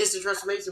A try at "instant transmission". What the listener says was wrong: You're not even saying the thing right. You're saying instant transformation. No, you said transformation.